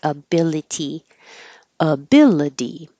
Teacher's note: any word that ends with ity that looks like itty will really sound like a d. So even the word ability will not sound like ability.